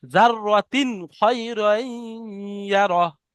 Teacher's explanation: এই তানমিনকে বিনা গুণনায় জাহির করে তাড়াতাড়ি পড়তে হবে, একে ইজাহার বলা হয়।